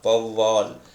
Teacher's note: சொல்லோட வந்து முதல்ல வரும் பொழுது இது 2 மாத்திரையிலிருந்து 1.5 மாத்திரை அளவாக குறைஞ்சி ஒலிக்கும் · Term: ஔகார குறுக்கம்